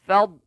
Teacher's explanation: Makhrajnya tepi lidah kita, sisi lidah kanan. Kalau kanan, belaga dengan kita angkatkan letak di geraham atas belah kanan.